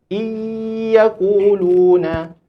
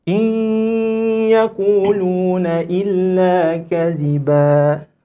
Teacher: Masukkan dalam hidung tuan-tuan dan puan-puan. Jangan kita bunyikan seolah-olah tak masuk, kita masuk dalam ya terus.